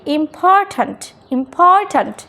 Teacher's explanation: তো এখানে ভালো করে একটু খেয়াল করি, তো আমাদের যে দুইটা সিলেবল আছে এখানে ইম্পর্ট্যান্ট, তো এই যে ইম্পর্ট্যান্ট এখানে পিটা হচ্ছে স্ট্রেস সিলেবল এবং স্ট্রেস সিলেবলের শুরুতে পি আছে বলেই এখানে ইম্পর্ট্যান্ট।